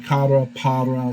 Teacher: your tongue kind of taps that that ridge behind your teeth it's just a tap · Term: alveolar tap